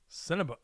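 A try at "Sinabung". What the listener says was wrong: Not Cinnabon, not Cinnabuns. Cinnabung. Bunga. Like Kawabunga. Cinnabung.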